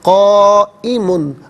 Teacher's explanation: minimum اس کو 4 الف کی مقدار کھینچ کر پڑھنا ضروری ہے، اور میگزیمم اس کو 6 الف کی مقدار کھینچ کر پڑھ سکتے ہیں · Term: مد متصل